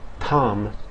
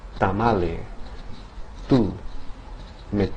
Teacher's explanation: The T in Spanish varies slightly from the T in the English pronunciation of the name Tom. and that in Spanish the tongue is lowered and makes contact against the back of the upper teeth